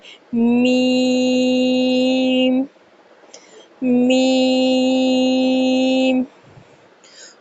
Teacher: میم دونوں ہونٹوں کے خشک حصے سے ادا کیا جاتا ہے، یعنی جو ہمارے ہونٹ کا باہر والا حصہ ہے جس پہ ہم گرلس جو ہے لپسٹک لگاتی ہیں وہ والا حصہ، اس حصے سے میم کی ادائیگی کی جاتی ہے۔ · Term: حروف شفاویہ